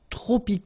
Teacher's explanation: see that even if we've got the plural form here s we don't pronounce the S and then we don't pronounce the T either